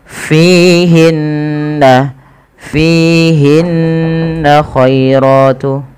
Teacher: ada ghunah pada lafal bacaan nun berharakat tasydid